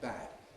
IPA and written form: bæd (bad)